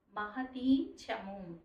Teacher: మహతీంచము ఆ సున్నా దగ్గర కూడా ఎన్ సౌండ్ రావాలి